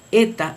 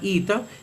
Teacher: En la pronunciación erasmiana, eta es eta y representa el fonema o sonido e, pero en la pronunciación reucliniana se llama ita y representa el sonido o fonema i.